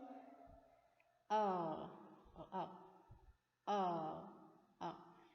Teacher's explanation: the center of the mouth and our lips are half close or in the mid